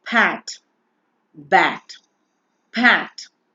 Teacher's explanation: the complete closure of the lips result in the production of the initial sounds of the words like pat, bat, pat. You close your lips completely.